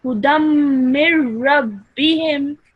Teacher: if the ra mushaddad comes after a noon sakin, then the nasal sound is dropped, okay? So you would directly say, join the meme to the ra.